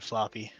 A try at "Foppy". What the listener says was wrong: No, Foppy. There's no L.